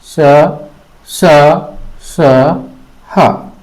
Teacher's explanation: ऊष्म व्यंजन जिन व्यंजनों के उच्चारण करते समय हवा मुख में घिसती हुई महसूस होती है, उन व्यंजन को ऊष्म व्यंजन कहते हैं